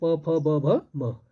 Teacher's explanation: प वर्ग का है प फ ब भ म, जो ओष्ठ होता है, दोनों ओठ लड़ते हैं, इसलिए उसको उच्चारण स्थान माना गया प फ ब भ म।